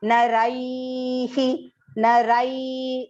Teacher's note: that rai is long and because it ends with an e, narai, so the visarga pronunciation also will be he